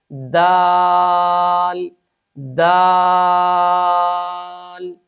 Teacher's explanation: صفت استفال اور انفتاح کی وجہ سے اس حرف کو خوب باریک ادا کریں گے۔